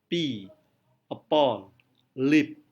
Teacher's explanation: P adalah voiceless bilabial. Voiceless bilabial.